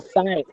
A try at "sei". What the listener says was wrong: It's not sigh, it's sei.